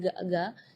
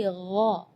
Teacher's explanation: Di ayat ini yang pertama di makhraj huruf ghain ya, ghairil maghdubi ya, perlu diperhatikan bukan G, bukan huruf G ya, bukan ga, tapi gha. Jadi kalau ga itu dia makhrajnya dari lidah. Ya, tapi kalau huruf ghain itu dari bagian tenggorokan ya.